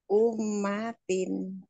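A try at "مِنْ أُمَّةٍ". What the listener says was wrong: Nah kalau idhar itu nggak boleh ditahan. Min ummatin gitu. Segera Bu. Ibu cari ada hukum apa di situ? Ada apa? hukum apa? Ah, nun mati ketemu alif. Alif itu kan huruf idhar. Min ummatin dibacanya jelas tuh. Min ummatin nggak ditahan.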